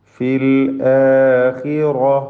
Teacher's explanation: ഇതിൽ ഖാഇന് കസ്റാണ്, കുറഞ്ഞ തഫ്ഖീം മാത്രം നൽകുക. റാഇന് തഫ്ഖീം പൂർത്തിയാക്കി നൽകുക.